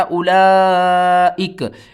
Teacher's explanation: last حرف کو ساکن کیا، زبر کو ختم کر دیا